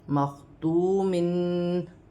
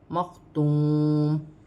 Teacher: وقف کی صورت میں دو زیر کی تنوین گر جائے گی اور میم ساکن ہو جائے گی